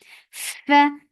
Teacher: Whenever you see fa, you give hams, and hams is flow of breath.